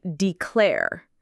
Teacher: has the stress on the second syllable